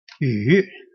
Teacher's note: that's a third tone, going down and going up.